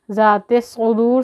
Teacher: ज़ाल को ज़बान बाहर निकालेंगे थोड़ी सी दांतों से